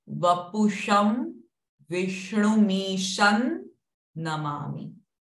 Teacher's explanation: the Sham Anuswara is followed by Na. So Anuswara sound is Na.